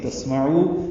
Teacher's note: سین ساکن پہ ہمس ہے، عین وسط حلق سے ادا کریں گے، او واو مدہ ہے، 2 حرکات لمبا کریں گے.